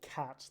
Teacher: So air is getting pushed out of my mouth when I say cat. The k, there's air that's flowing out there. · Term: aspirated